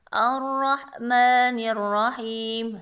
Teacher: Alif lam mati tapi tersembunyi, dia tertutup oleh huruf setelahnya, huruf ro, karena huruf ro salah satu huruf syamsiyah, ya. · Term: idgham syamsiyah